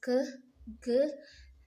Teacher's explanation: the tongue is in contact, contact with the lower side of the soft palate, and we call this speller consonant.